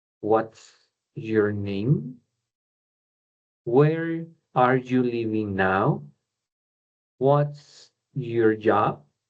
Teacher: la entonación de este tipo de preguntas va hacia abajo empezamos fuerte y terminamos más suave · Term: falling intonation